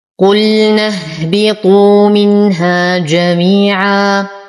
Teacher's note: نفخم القاف ونتم ضمتها